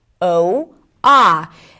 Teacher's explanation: in American English, there is no pure O sound - there is either 'ow' as in 'go' or 'aa' as in 'honest'